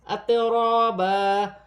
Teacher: 2 زبر کی تنوین میں غنہ نہیں ہوگا کیونکہ آگے حمزہ ہے۔ اطرابا، را پر زبر کی حرکت ہے، را موٹی پڑھی جائے گی